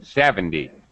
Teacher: And reduce the T in 70.